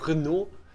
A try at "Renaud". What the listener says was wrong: You don't pronounce the last letter in French, you know.